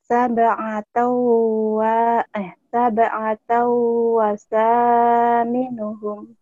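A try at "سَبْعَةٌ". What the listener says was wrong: Jangan sab'atau. Sab'atu. Ini kan tun.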